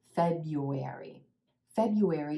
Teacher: you've got that sneaky y in there and also that W sound